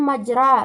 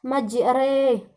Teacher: Di sini kita baca bukan majra melainkan majre, karena dia merupakan hukum imalah, yaitu di sini terdapat ra berbaris fathah, tetapi pada saat kita membacanya kita baca seperti seolah-olah dia berhuruf seolah-olah memiringkannya, membawanya ke huruf kasrah